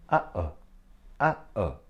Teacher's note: we make a short hiccup noise between a and o so this is our glottal sound or glottal stop it actually